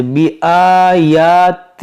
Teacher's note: یا پر کھڑا زبر ہے، تو اس کو ایک ایک الف کے برابر کھینچنا ہے